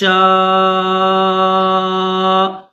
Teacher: 5 الف کی مقدار میں کھینچیں گے، یعنی تقریباً 6 سے 7 سیکنڈ اس کو کھینچیں گے